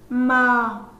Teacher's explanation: Khi phát âm âm mờ thì chúng ta thấy luồng hơi đi ra bị cản lại, do đó âm mờ được gọi là phụ âm.